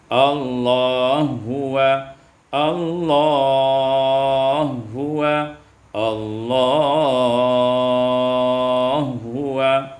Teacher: idghamul ha fil ha, diidghamkan ha pada ha menjadi inna huwa.